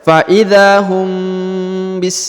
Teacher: mim sukun bertemu ba maka didengungkan seakan-akan menyebut huruf ba ya Fa bis ya didengungkan ya huruf mim